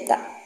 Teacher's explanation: Yang ketiga yaitu adalah elisi, penghilangan bunyi dalam pengucapan, terutama pada saat berbicara cepat. Contoh, kata tidak sering diucapkan menjadi tak dalam percakapan sehari-hari